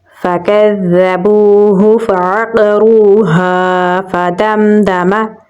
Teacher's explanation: ملا کر پڑھیں گے، دال کو میم کے ساتھ ملائیں گے، میم میں صفت توسط ہے تو تھوڑا سانس جاری رکھ کے پڑھیں گے